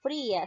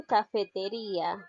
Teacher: en el diptongo la cerrada no es tónica, pero en el hiato la cerrada sí es tónica · Aquí estamos viendo algo peculiar, que la vocal cerrada está siendo tildada, es decir, aquí la vocal cerrada lleva la mayor fuerza de voz, por lo tanto estamos hablando de un hiato